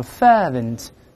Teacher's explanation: 英式读成▁fervent▁没有卷舌音